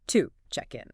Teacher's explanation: to isn't pronounced with its full, strong oo vowel sound, like if you said the word to. Instead, it gets reduced. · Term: schwa